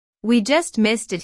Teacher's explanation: Notice the emphasis on just to show the very recent past.